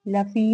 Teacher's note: لفی میں یائے مدہ ہے، 2 کاؤنٹس اس کو کھینچ کے ادا کیا جائے گا